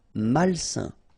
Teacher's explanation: A-I-N together, it's a nasal and it's un.